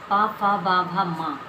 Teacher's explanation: इसमें हमारे ओठ से ओठ टकराते हैं, इसलिए इन्हें ओष्ठ व्यंजन कहा जाता है।